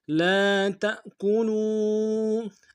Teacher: تا کو حمزہ کے سامنے لانا ہے، جھٹکا دیں گے